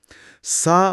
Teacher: इसके लिए जुबान की नोक को ऊपर के दांतों के किनारे से हल्का सा छूना पड़ता है। जिससे हवा एक नरम सरसराहट के साथ बाहर निकलती है। इसमें सीटी नहीं बल्कि हवा की आवाज है। · اس کے لیے زبان کی نوک کو اوپر کے دانتوں کے کنارے سے ہلکا سا چھونا پڑتا ہے، جس سے ہوا ایک نرم سرسراہٹ کے ساتھ باہر نکلتی ہے۔ اس میں سیٹی نہیں بلکہ ہوا کی آواز ہے، جیسے انگریزی میں تھنک کے شروع میں ٹی ایچ کی آواز۔